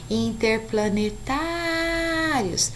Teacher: O tá é a sílaba tônica da palavra interplanetários.